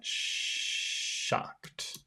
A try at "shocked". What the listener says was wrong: Shocked. Whistle more. You have to whistle more.